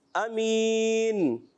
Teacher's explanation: امین میں حمزہ ادا کرنا ہے، عین کی ادائیگی نہیں ہونی چاہیے۔ بعض پڑھتے ہیں آمین، آمین نہیں، امین۔